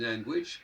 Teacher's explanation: quand ils disent language, on entend le u qui vient après le g.